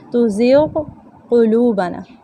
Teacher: फसब्बिहु तुज़िग़ क़ुलूबना, ग़ाइन और क़ाफ़ भी करीबुल मखरज है लेकिन अलग अलग पढ़े जाएंगे, इदगाम नहीं करेंगे।